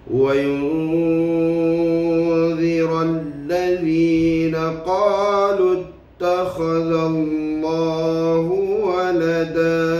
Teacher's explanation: Kita melihat ayat yang keempat ini adalah hukum ikhfa hakiki yang berada di depan itu, iaitulah menyembunyikan nun mati ke dalam huruf zal